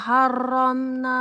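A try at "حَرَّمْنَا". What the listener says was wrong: Haramna. Huruf H-nya dia di tengah-tengah kan Ibu. Ha. Haramna. Haramna.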